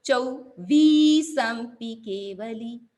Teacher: चौ उ छोटा है और फिर व लॉन्ग है लंबी है दीर्घ है